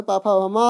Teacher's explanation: पा वर्ग जो है पा फा भा मा आपका है, यह इनका उच्चार स्थान कहाँ है, ओष्ठ है